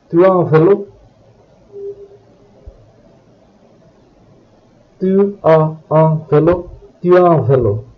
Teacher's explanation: you say the entire phrase as if it were one word without any pauses, and the sounds of tu as seem to merge. Tu as un vélo, tu as un vélo, tu as un vélo.